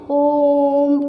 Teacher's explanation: तो ओ जो है उसको हमने इन को बोलने के बजाय और ज़्यादा तिगने स्वर के साथ में या तिगने उच्चारण के साथ में, तिगने समय के साथ में बोला, इसलिए प्लूत स्वर जो होते हैं वो संस्कृत के शब्दों के साथ चलते हैं ज़्यादातर, और ये तिगने समय में बोले जाते हैं